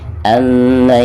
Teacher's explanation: Ada nun sukun lalu berhadapan dengan salah satu huruf idgham, di sini huruf lam ya, dan termasuk idgham bila gunah. Jadi cara membaca nun sukun tersebut itu harus dimasukkan ke huruf lam ya, tanpa ada gunah ya